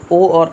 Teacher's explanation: मतलब कंठ और ओष्ठ दोनों से जो बोले जाते हैं वो ओ और औ हैं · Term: कंठ ओष्ठ